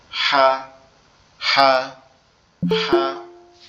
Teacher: হা অক্ষরটাও same কাশির মতো দেখতে। হা হা হা অক্ষরটা কিরকম হবে, আমাদের গলাটা একটু চেপে আওয়াজ হবে